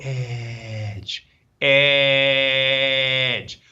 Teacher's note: when you say Edge you'll feel like a vibration in the back part of your throat